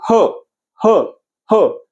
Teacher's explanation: ह पण कशातून बाहेर पडते बघा, तुमच्या कंठातून बाहेर पडते.